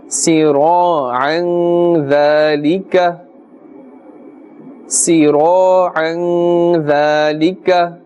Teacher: Look at the dhal. Dhal is one of the ikhfa letters, the 15 ikhfa letters, and therefore we are doing ghunna. We are pulling a little bit because dhal is here after the tanween, and we know the rule.